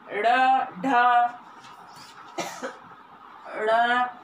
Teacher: उत्क्षिप्त, उत्क्षिप्त में इसमें जीभ की नोक तालु को कुछ दूर तक छू कर मुख द्वार को झटके से खोलती है